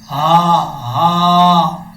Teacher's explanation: یہ ہا بھاری ساؤنڈ کے ساتھ پڑھا جائے گا، اس کی آواز سینے سے نکلے گی